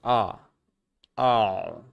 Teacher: The a vowel is considered a low back vowel. · >> If you look at the vowel quadrilateral, you'll notice the a vowel is located in the lower right hand corner. It is the lowest and farthest back vowel that is made in American English.